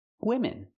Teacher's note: Use the short I sound for both syllables.